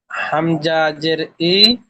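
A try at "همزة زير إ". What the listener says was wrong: হামজা জের ই নয়, হামজা নুন জের, নুনের উপরে তাসদিদ এসছে, তাই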